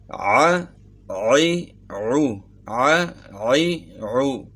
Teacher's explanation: گلے کے درمیان سے اس کو نکالنا ہے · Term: عین